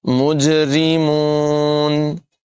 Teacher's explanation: را جو ہے اس کو باریک پڑھیں گے، روئی نہیں پڑھیں گے، ری پڑھیں گے، بغیر اس کو پر کیے ادا کریں گے، مجرمون۔